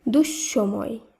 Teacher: উচ্চারণ হবে নিঃশেষ একইভাবে দুঃসময় এই শব্দে বিসর্গের পরে রয়েছে দন্তস তাই শুদ্ধ উচ্চারণে দন্তস দুবার উচ্চারিত হবে